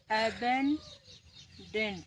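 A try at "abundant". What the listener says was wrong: डेंट ना डंट डंट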